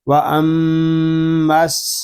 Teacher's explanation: سین یہ حروف صفیریہ میں سے ہے، اس میں سیٹی کی آواز بھی آئے گی